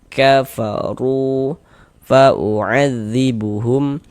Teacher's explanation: Ada huruf waw sukun, sebelumnya ada harokat dhammah, maka huruf yang memiliki harokat dhammahnya dibaca panjang, sehingganya ru dibaca panjang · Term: Mad tabi'i